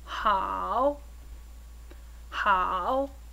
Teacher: how how is also a falling and Rising third tone · when by itself is actually pronounced with a falling and Rising tone it's only when two third tones are said one after another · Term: 3rd tone